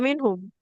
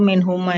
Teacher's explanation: Kalau minhuma yang mimnya itu ketika wakaf ataupun kita lanjutkan bakal bacaannya tetap panjang